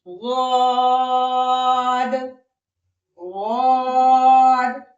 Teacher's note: आप महसूस कर सकते हैं किद की अदायगी करते हुए आपकी जबान के दोनों मोटे किनारे ऊपर की पांच दाढ़ों से लग रहे हैं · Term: हाफतान, हाफ़तुल लिसान